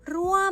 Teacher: Các bạn nhớ lưu ý là /ruaam/ được quy định đọc bằng falling tone không đọc là /ruaam/ (mid tone) mà phải đọc là /ruaam/